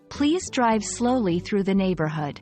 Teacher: the word drive has a stronger emphasis compared to slowly